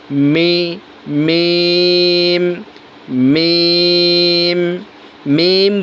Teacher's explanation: মিম মিম বলে আবার ঠোঁট লাগাই দেবো। তাহলে মিমের উচ্চারণ সঠিক হবে।